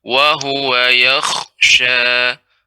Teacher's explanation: kha ini huruf isti'la. Jadi pengucapannya tetap tebal.